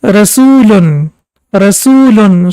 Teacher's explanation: The first one was rul for 1 second and now we can see that oo sound is prolonged for 2 seconds and rami a vow has dma before it as we can see over here. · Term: long vowels